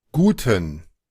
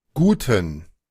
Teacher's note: Aquí sí se escucha con schwa. guten, Se escucha el ten muy fuerte, como que fuera con schwa.